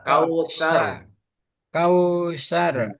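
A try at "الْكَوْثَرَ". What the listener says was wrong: Lagi lidahnya ditarik lagi ke depan. Digigit antara atas, gigi atas dan bawah. Tar, bukan, bukan. Lagi, sedikit lagi, ditarik kayak orang lidahnya kayak digigit gitu. Tar, lagi. Sedikit masih masuk.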